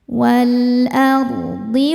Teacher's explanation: ro sukun dibaca secara tafkhim karena didahului harakat fathah maka dibacanya tebal.